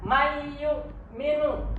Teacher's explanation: Nah, ini nunnya hilang. Nunnya itu langsung masuk ke huruf berikutnya. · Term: idgham biguna